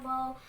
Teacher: ہونٹوں کو گول کرنے سے ادا ہوتا ہے.